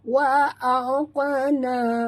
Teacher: huruf qaf adalah huruf qalqalah. Jadi bila dia mati di tengah kalimah, lantunkan dia ya.